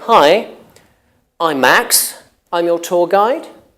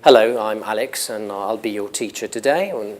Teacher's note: relatively new pattern in English intonation which is called up talk it's using your voice going upward if you like while saying a statement